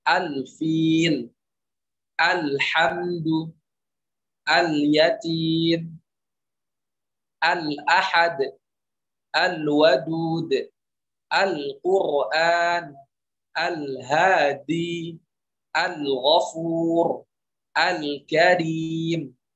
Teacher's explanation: alif lamnya dibaca jelas karena bertemu dengan salah satu 14 huruf yang ada